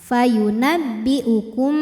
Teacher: Kemudian ada hukum ikhfa syafawi, sebab ada mim sukun yang menghadapi huruf ba. Maka cara baca mim sukunnya didengungkan. Fayunabbi'ukum, tahan.